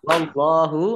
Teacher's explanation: Allahnya dibaca tebal karena harokat di depannya fathah. Lam fathah berdiri mat tobi'i.